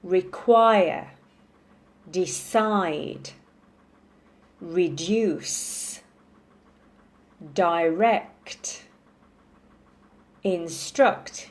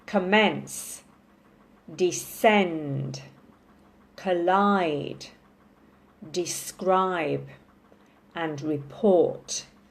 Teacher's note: so all those verbs, we stress the second syllable